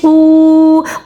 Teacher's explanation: قو کو واو مدہ کی وجہ سے 1 سیکنڈ تک کھینچ کے پڑھا جائے گا